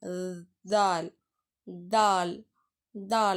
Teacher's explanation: நாக்கோட நுனி பகுதி வந்து மேல இருக்கக்கூடிய பல்லை வந்து அழுத்தமா தொடணும். குரல் வல்லோசையுடன் அதாவது குரல் வல்லோசையுடன் வல்லினமாக ஒளிக்க வேண்டும்.